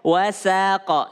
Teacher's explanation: Wa tipis, sin tipis, qaf tebal. Jangan sampai sinnya terpengaruh dengan qaf.